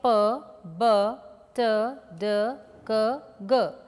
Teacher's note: of articulation like we have in the plausives the two articulate there is a complete blockage and sudden release of air